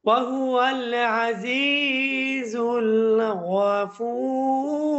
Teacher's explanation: এই জায়গার মধ্যে যে ফা ওয়াও পেশ ফু আছে, এটাকে আপনি ৩ আলিফ লম্বা করে পড়তে পারবেন। এটাকে বলে মদ্দে আরিজ।